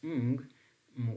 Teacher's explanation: ung is also voiced velar nasal